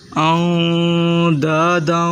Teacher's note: حمزہ کو نون ساکن سے ملا، غنہ کریں